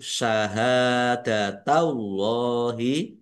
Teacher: Nak tumu syahadatallahi hak fathah alif mat tabi'i panjang dua harokat. Allahnya dibaca tebal karena harokat di depannya fathah.